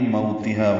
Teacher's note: وولین ہے، ہونٹوں کی گلائی سے ادا کریں گے